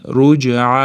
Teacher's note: J yo'g'on harf bo'lmagan uchun qalqalasi unaqa yo'g'on emas, o'rtacha chiqadi.